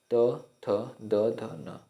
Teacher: दंत ध्वनियाँ वह होती हैं जिनके उच्चारण में जीभ दांतों के पिछले भाग को छूती है